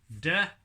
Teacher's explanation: uses a tongue in the front of the mouth but it doesn't involve any lip movement